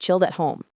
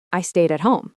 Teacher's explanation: They connect chilled at, so try saying it smoothly. That's what we call connected speech.